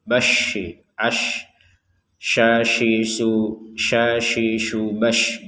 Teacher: Sini yang perlu dijelaskan ini ada huruf syin. Huruf syin ini tidak seperti huruf S dalam bahasa Indonesia. Jadi ada banyak nafas yang keluar.